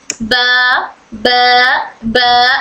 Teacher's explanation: ब दोनों होंठ बंद होकर उन दोनों का जो वेट वाला पार्ट है वो टच होकर हर्फ ब अदा होता है। दोनों होंठ अपर एंड लोअर लिप्स पूरी तरह बंद होते हैं और फिर खुले होते हैं। · एक्सप्लोसिव साउंड है, यानी हवा इकट्ठा होकर फिर निकलती है। बा में पहले हवा अंदर मखरज में इकट्ठा हो जाती है, फिर बाहर निकलती है।